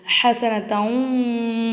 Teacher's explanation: ஒரு எழுத்தை இன்னொரு எழுத்தோட ஜாயின் பண்ணி குன்னா செஞ்சு ஓதணும்